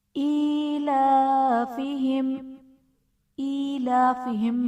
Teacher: میم ساکن ہے، ایلافہم میں میم ساکن کے بعد را، با اور میم کے علاوہ حرف ہے، تو یہاں پر اظہار شفوی کا قاعدہ ہوگا، یعنی میم ساکن میں ہم غنہ نہیں کریں گے۔